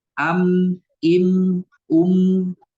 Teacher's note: mim pun sama bertemu dengan dua bibir am Im Um akan tetapi bunyinya keluar dari hidung